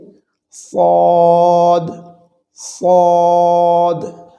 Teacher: এটি একটি চাপা মোটা আওয়াজে উচ্চারিত হয়ে থাকে